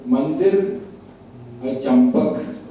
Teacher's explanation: वही अनुस्वार एक जगह न उच्चारण हो रहा है, एक जगह म उच्चारण हो रहा है